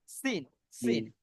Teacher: হালকা মুখ থেকে বাঁশির মতো সাউন্ড আসছে একটা